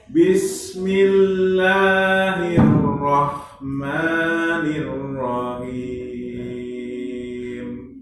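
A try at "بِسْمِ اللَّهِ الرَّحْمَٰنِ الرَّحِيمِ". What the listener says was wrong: Bang huruf H-nya Pak ya. Irrahmanirrahim. Ha.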